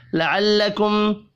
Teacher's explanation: میم ساکن کے بعد تا ہے، اظہار شفی ہوگا، غنہ نہیں ہوگا